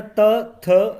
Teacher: त, थ दंत व्यंजन है, तो देखिए दंत व्यंजन है ये दंत व्यंजन है, क्योंकि दोनों को बोलने में जीभ दांत से टकरा रही है